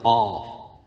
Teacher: قاف زبان کی جڑ اور اوپر کا تعلق